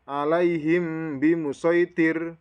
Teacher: maka dibaca ikhfa safawi, yang dimana cara membacanya disamarkan bunyi mem matinya itu